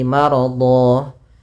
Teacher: Maka ini berubah menjadi panjang, bukan lagi maradhan tapi menjadi maradha sebagaimana mad tabi'i. Dan itu ketika kita wakaf. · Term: mad iwad